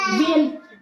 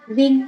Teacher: n của chúng ta không cần phải khép môi đúng không thì chúng ta sẽ phải đọc là viên